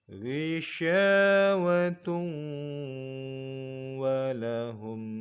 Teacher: Hukumnya idgham bi gunnah. Maka kita dengungkan, kita leburkan tanwin kepada huruf waw.